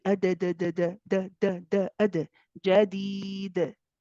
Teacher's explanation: when you get to the qalqala, you relax away from the kasra position